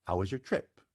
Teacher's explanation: goes up but then falls during the duration of the word trip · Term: falling glide intonation